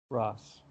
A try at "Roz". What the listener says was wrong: No, it's a Z. Roz, sorry.